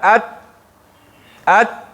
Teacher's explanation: ات ات کوم ځای کې لګېږي د ژبې سر د ثنایا علیا بیخونو سره